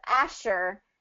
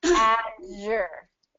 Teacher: Same thing as the SH sound, but it's the z. So same mouth position, but we're turning on our voice.